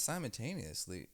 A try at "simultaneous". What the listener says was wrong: Yeah, without the Y.